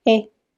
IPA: e